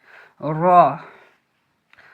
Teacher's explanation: র মোটা করে জিভের আগার উল্টো পিঠ এবং তার বরাবর উপরের তালুর সাথে লাগিয়ে উচ্চারিত হয় র